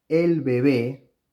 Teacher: here I am also pronouncing the approximant because the word baby ends in a vowel and this vowel precedes the consonant of the following word and